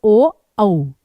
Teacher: अब औ बोलते समय होंठों का भी प्रयोग है, गले का भी प्रयोग है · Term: कंठोष्ठ